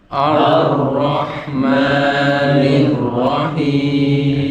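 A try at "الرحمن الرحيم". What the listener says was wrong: Jadi jangan kepanjangan. Ar-Rahmanir-Rahim.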